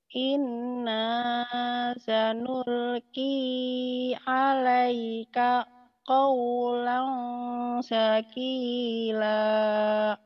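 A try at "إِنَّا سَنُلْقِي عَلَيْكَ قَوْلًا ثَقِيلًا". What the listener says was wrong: Sa-nya ujung lidah ya. Ya, inna sanulqi alaika qawlan saqila.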